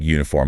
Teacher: It starts with the letter U, which is a vowel, but it sounds like uniform, like a Y sound at the start